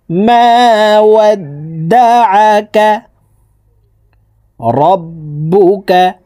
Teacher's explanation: আইন হরফকে হলকের মধ্যখান থেকে চাপ দিয়ে উচ্চারণ করতে হবে, কারণ আইনের মখরাজ হলকের মধ্যখান থেকে হবে।